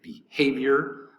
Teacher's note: violent anger okay number six behavior behavior three syllables behavior behavior the accent is going to be over the second syllable · Behavior, 3 syllables, accent over the second syllable.